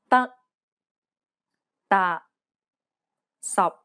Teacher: the final p t and k are unreleased in cantonese this means that you must not release a burst of air when pronouncing this sound